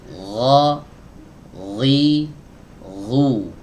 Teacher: Adapun huruf ghain itu tidak boleh diiringi dengan aliran nafas. Jadi yang mengalir di sini hanya suaranya saja. Nafasnya tidak boleh mengalir.